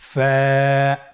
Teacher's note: ফা হরফটি উচ্চারণের ক্ষেত্রে বারিক হবে এবং এক আলিফ টেনে পড়তে হবে।